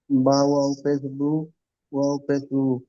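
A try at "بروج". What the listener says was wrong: বা ওয়াও কোথায় পেয়েছেন দেখেন। জিমের উপর পেশ নেই কিন্তু, দেখেন, দেখেন, এটা কি, এটা সাকিন বলা হয় একে, দেখেন। সাকিন নয়? হ্যাঁ, এটা সাকিন, তাহলে পড়েন।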